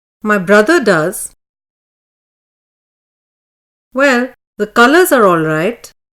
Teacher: the pitch of the voice falls from high mid to mid low level and then rises to more or less the same level as at the beginning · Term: falling rising tone